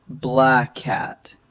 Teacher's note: So it's black cat, not black cat with a clear pause. Right, no gap, no double sound. Just one smooth stretch through the shared consonant. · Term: linking